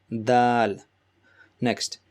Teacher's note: Dal, as you can see, the color code Dal, it matches with the Ta's color. So Dal is again where the tip of your tongue touches the bottom of your upper teeth and gum. So where the bottom of your upper teeth and gum meet, that's where your tip of your tongue should be to pronounce this Da sound.